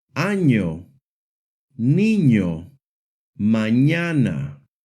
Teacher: The letter N makes the NY sound, similar to the NY sound in the English word canyon.